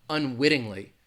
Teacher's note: you have a tea sound in the middle of a word the flap T sounds like a D a very soft D